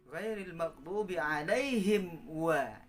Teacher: Mim sukun ketemu wawu juga disebut izhar safawi. Harus dibaca dengan jelas.